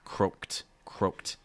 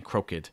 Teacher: when you say croaked you're gonna go right from that k to that ed sound so get that croaked croaked make sure you're not saying crooked